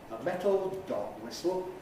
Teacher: A metal high-head dog whistle, compound noun. Nucleus on the dog, low rise. Stress on the whistle, continuing the compound noun. Tone continues upwards.